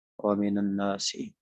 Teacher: نون بھی ساکن تھا من، تو آگے ملانے کے لیے فتح دے دیا. فتح ہلکی حرکت ہوتی ہے، اخف الحرکات اس کو بولتے ہیں.